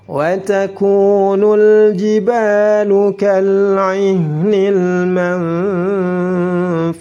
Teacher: lam ta'rif bertemu dengan jim dibaca izhar. · taku dibaca 2 harakat karena ada waw sukun sebelumnya dhammah. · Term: Izhar qamariyah